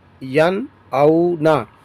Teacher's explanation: کر کے پڑھیں گے، یہاں پر بھی اظہار ہی ہوگا کیونکہ نون ساکن کے بعد یہاں پر حمزہ حروف حلقی میں سے آیا ہے تو اس کو ظاہر کر کے پڑھیں گے